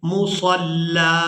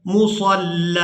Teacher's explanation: یہاں پر اس کے آگے الف نہیں ہے، لیکن اس کے باوجود اب ہم یہاں پر وقف کریں گے تو وقف کی صورت میں ہم لام پر ایک زبر ادا کریں گے اور اس کو ایک الف مقدار کھینچ کر ادا کریں گے، مصلی۔ اب اس کے جوڑ ہجے اس طرح سے ہوں گے، میم پیش مو، صاد لام زبر صل لام زبر لا، مصلی۔